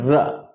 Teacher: र का उच्चारण स्थान है मूर्धा